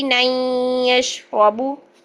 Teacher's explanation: نون کی اور یا کی آپس میں آواز 50-50% مرج ہو جائے گی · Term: ادغام